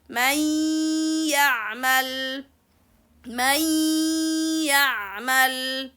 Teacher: Noon Sukun followed by ya, and this is 2 counts, idgham with ghunna.